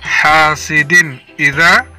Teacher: tanwin bertemu alif dibaca izhar, artinya jelas, hasidin idza.